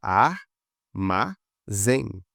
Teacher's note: Ar, vamos separar as sílabas, ar, ma, zém. Trissílaba, porque tem três e a última que é a mais forte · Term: oxítona